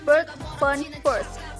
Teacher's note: This is a mid-central vowel which is used in most English accents